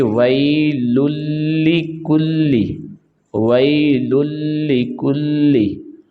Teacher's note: تو یہ یا لین ہے، یہ اس کی پہچان یہ ہے کہ یا ساکن سے پہلے زبر آ جائے، یا زبر کے بعد یا ساکن آ جائے، ایک ہی بات ہے۔ اور لام کو ہم لام کے ساتھ ملائیں گے تو یہ ادغام ہے، تو اس کو بغیر غنہ کے ہم پڑھیں گے